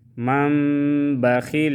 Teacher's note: نون ساکن کے بعد جب با آ جائے تو ہم پھر نون نہیں پڑھیں گے، میم پڑھیں گے۔ میم زبر مم، من بخیل، اور ادھر اخفاء کریں گے، اخفاء شفوی، من بخیل۔